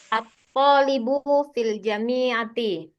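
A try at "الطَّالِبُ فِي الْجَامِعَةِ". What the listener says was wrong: Ja panjang. Filja.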